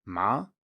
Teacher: then we have the second tone which is a rising tone